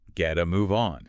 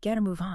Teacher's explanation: a flapped T. Okay, a flap T. It sounds more like a soft D. It becomes getta.